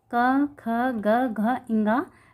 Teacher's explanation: तो हम समझते हैं कंठ यानी गला, गले से स्पर्श होकर निकल रही है।